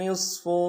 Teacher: وَلَكُمْ نِصْفُ، نون کو صاد کے سامنے لانا ہے، صاد کو موٹا ادا کریں گے۔